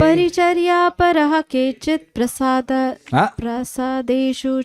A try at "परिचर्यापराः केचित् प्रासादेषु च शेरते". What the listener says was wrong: प्रो नहीं है, प्रा है। प्रा मतलब महल। परिचर्या परहा केचिद प्रासादेषु च शेरते।